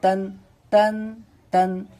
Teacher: تنوین اور نون ساکن کی آواز یکساں ہوتی ہے برابر ہوتی ہے تو اسی لیے دونوں کی آواز ایک ہی جیسی ہوگی تا